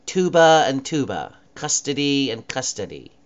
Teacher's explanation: They sound exactly the same in certain dialects because the R is dropped.